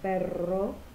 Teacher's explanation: La siguiente es apicogingival vibrante múltiple sonora, tiene el sonido vibrante múltiple